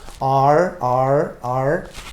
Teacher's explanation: Si se ponen la mano aquí en la garganta y pronuncian la R, se van a dar cuenta que las cuerdas vocales vibran. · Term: consonante sonora